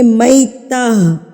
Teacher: یہ گولتا وقف کی صورت میں گول ہاں میں تبدیل ہو جاتی ہے